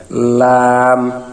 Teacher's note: এখানে জিহ্বার একেবারে সামনের আগার কিনারাটা পাতলা হয়ে তার উপরের দাঁতের মাড়ির সঙ্গে লাগবে